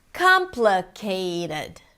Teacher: So we have 'KAAM' - the primary stress, 'pluh' - reduced.